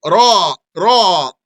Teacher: The ra is on the edge of the tongue, and the edge here does not mean the tip, not the tip, not the very tip. · you might be making your ra a little heavier than it needs to be, but it's on the edge of the tongue. So don't make it too heavy.